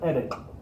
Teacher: nobody says edit you're not really fully pronouncing the d there you're saying it with the tip of the tongue flapping